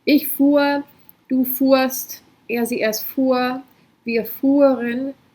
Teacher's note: The H is just there to make it a long vowel, it's the same as here. So you don't have to pronounce the H, just pronounce a long U sound.